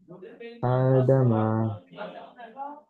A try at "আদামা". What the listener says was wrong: আদামা। আমার সঙ্গে সঙ্গে পড়েন, আদামা। হ্যাঁ, আপনি কায়দাটা ঠিক বলেছেন, কিন্তু পড়ার সময় আপনার একটু ভুল হয়ে গেল। আপনি পড়েছিলেন যে হামজা খাড়া যাবর আ, ডাল যাবর দা, মিম যাবর মা। কায়দা ঠিক বলেছেন, পড়েছেন, কিন্তু একসঙ্গে পড়ার সময় আপনি হামজাটা টান দেননি। একসঙ্গে পড়ার সময়ও ভালোভাবে পড়তে হবে। আ দামা।